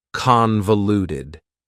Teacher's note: convoluted also has four syllables and the stress is on the first syllable convoluted that second syllable again has that schah sound that reduced